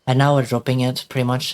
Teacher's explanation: You will see that the pitch is a lot lower. The pitch is very low now. But the larynx is still high. The resonance is still the same.